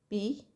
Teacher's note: This is vocal tract, right? So then complete closure of vocal tract followed by a burst of air when the closure is released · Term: stops